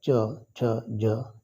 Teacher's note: यांचा उच्चार जीभ आत ओढून टाळूला स्पर्श केल्यात त्यांना तालव्य म्हणला जातो